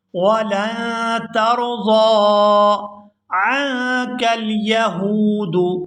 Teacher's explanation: یہاں لام کو نون مشدد کے ساتھ ملائیں گے